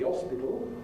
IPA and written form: ˈɒspɪtl̩ (hospital)